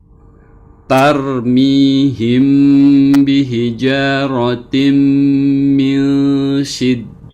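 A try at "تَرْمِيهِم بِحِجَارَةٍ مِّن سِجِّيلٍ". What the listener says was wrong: Iya, hanya Pak dikeluarkan lagi udaranya lebih dalam karena ini ha pedas ya. Tarmihim bihija ya. Bihijaratin.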